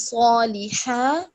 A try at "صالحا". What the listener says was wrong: صاد کو موٹا کیجیے صالحا.